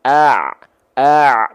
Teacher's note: Kalau ain dilafalkan dia dari bagian tengah tenggorokan.